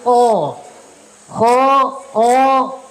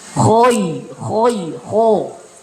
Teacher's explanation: dia terangkat pangkal lidahnya itu dan dia ditebalkan